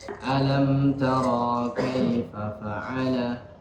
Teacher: tara di sini ra-nya pendek, ya. Biasaan ra-nya itu dipanjangkan.